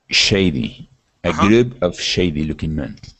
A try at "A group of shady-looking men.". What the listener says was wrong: Exactly.